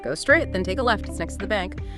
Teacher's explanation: Friendly, clear instructions, falling intonation generally.